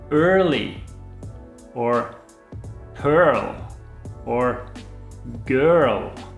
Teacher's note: when you pronounce the uh you make the sound at the back of your mouth and not the front